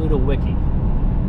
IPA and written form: ˌluːdəˈwɪsi (Ludowici)